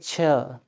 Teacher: जब हम बोलेंगे छ तो जीभ तालू को टच करेगी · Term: तालव्य